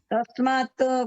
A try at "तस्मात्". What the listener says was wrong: तस्मात् त नहीं है, त आधा है। तस्मात् क्या कहते हैं? तस्मात् कारुण्य भावेन। तस्मात्, हाँ त आधा है।